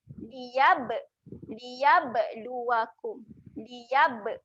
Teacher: Huruf ba kat sini keadaannya mati. Ada tanda sukun kan? Okay. Bila mati, dia ada lantunan.